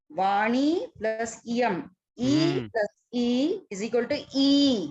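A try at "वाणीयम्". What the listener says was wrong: No. Second one is a hraswa. E plus E. E plus E is equal to E. Dirgha plus hraswa is equal to dirgha. Be very careful in your pronunciation. cut the harasva short, especially as you are analyzing. Of course, you are not expected to give oral answers in the exam, but I am thinking what you are pronouncing is what you are understanding.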